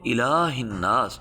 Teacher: لام کو کھینچیں گے، حمزہ کو نہیں کھینچیں گے